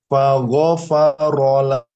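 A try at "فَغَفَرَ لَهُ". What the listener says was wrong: Belum, itu masih fago. Tapi fagho. Coba.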